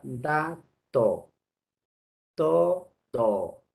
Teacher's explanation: Si se junta la lengua y la cara interna de los incisivos superiores, ¿qué sonido se produce ahí? El sonido dental. Son sonidos dentales D y T. · Lengua y diente. Por eso se llama dental.